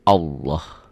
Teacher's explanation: Nih, lafaz Allah dibaca tafkhim, tebal, berbunyi Allah. Jadi kalau mengungkapkan ini seperti ada W-nya ya.